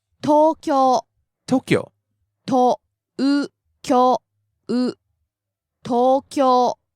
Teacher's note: So we have rising and then staying high.